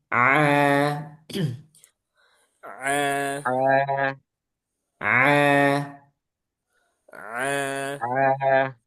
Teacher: Ain ini rawan masuk hidung padahal dia bukan huruf yang keluar dari hidung ya. Dia keluarnya dari tengah tenggorokan. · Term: huruf ain